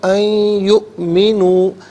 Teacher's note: وما منع الناس ان یؤمنوا، نون ساکن کو یا کے ساتھ ملائیں گے، یا کی آواز کو غنّے کے ساتھ ادا کریں گے، یہاں یرملوں کا جو قاعدہ وہ اپلائی ہوگا، اور حمزہ ساکن ہے، جھٹکے کے ساتھ پڑھیں گے۔